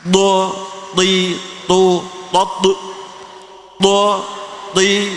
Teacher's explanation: th ini lebih kencang dan seluruh lidah mengarah ke atas